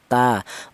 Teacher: keluarnya huruf berasal dari ujung lidah menyentuh pangkal gigi seri atas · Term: huruf ta